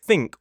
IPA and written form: θɪŋk (think)